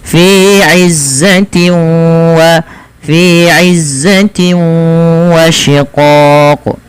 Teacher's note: disertai dengan bacaan gunah yaitu memasukkan suaranya ke rongga hidung kita dan di sini Idam buna juga kita kenal dengan Idgham naqis · Dan di sini idgham bi gunnah juga kita kenal dengan idgham naqis, dan dalam bacaan ini ada namanya idgham naqis. Ya, tidak secara utuh idghamnya masuk, tapi dia ada naqisnya. Masih menyisakan bunyi sedikit suara bunyi nunnya.